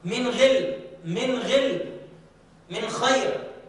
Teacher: المرتبة التي بعدها النون الساكنة في حالة الإظهار، من غل، من غل، من خير، مع أن النون تظهر من خير ولكن فيها غنة، ولكنها غنة ضعيفة، ليست كمثل المشدد ولا المدغم التام والمدغم الناقص.